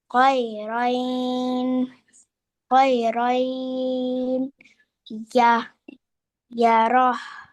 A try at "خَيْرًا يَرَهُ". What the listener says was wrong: I say you also don't make a sound from a noon. خيرا يره وقفا خيرا يره.